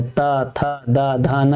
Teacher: उसके बाद ता था दा धा ना, ता जीभ क्या होता है ऊपर वाले दांत के पीछे जाके टच करता है, दंत होता है, ता था दा धा ना, इनको दंत ध्वनियां कहते हैं।